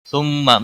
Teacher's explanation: ثم میم مشدد پر غنہ ہوگا.